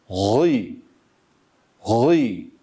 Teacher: Her ne kadar esre hareke ile okunurken sesini bakınız gi esreyi i sesiyle okuyor olsak bile harfin kendi temel sesi mahreçten çıkış sesi diğer bir ifadeyle kök sesi. Evet kök sesi kalındır. Dolayısıyla o kalınlığı yakalayıp sonra i sesiyle okuyoruz.